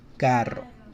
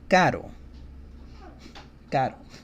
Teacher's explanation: the soft sounding R sounds almost like a D sound.